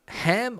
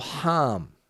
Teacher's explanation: there's an R in there, so you extend the A